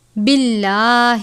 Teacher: لفظ اللہ کے لام سے پہلے زیر ہے اس لیے لفظ اللہ کے لام کو باریک پڑھیں گے، جیسے آپ بسم اللہ میں لام کو باریک پڑھتے ہیں کیونکہ اس لام میں بھی لام سے پہلے زیر ہے، یعنی میم کے نیچے زیر ہوتی ہے.